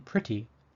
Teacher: the e in pretty sounds like a short I